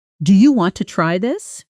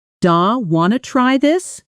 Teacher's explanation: Listen to how want to often becomes wanna in fast, casual speech.